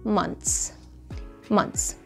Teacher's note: ولكن الخبر المنيح انه من الشائع جدا جدا جدا جدا عند المتكلمين الاصليين انه يلفظوا هيدي الكلمة بطريقة تانية كتير اسهل، واللي هي months months. يعني بدل ما يقولوا ث بيقولوا ت